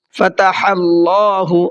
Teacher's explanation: اللہ کے لام کو منہ بھر کے پڑھنا